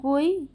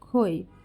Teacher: জোড়ার প্রথম শব্দের প্রথম ধ্বনিটি উচ্চারণ করতে মুখ থেকে অল্প বাতাস বের হয় এবং দ্বিতীয় শব্দের প্রথম ধ্বনিটি উচ্চারণ করতে বেশি বাতাস বের হয়